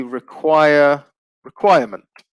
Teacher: stress remains on the second syllable